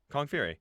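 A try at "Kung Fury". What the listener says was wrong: Why are you saying Kong? It sounded like you're saying Kong.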